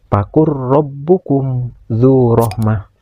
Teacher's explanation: yang berbaris domah menghadapi huruf wau sukun ini dinamakan mad thobi'i yang harus dibaca panjang. Panjang bacaannya dua harakat. · Dan selanjutnya ada huruf ro yang berbaris fathah. Huruf ro yang berbaris fathah ini harus dibaca tabhim, yaitu dibaca tebal karena huruf ro ini berbaris fathah. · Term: tafhim